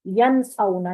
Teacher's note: نون کی آواز کلیئر ہونی چاہیے، کیونکہ آگے نون کے بعد آگے حمزہ آ رہا ہے، نون ساکن جو ہے یا کے بعد والا نون جو ہے تو حمزہ آ رہا ہے، اور حمزہ اظہار حلقی میں حروف حلقی میں سے ہے، اس لیے یہاں پر نون کی آواز کو ظاہر کریں گے ین اونا۔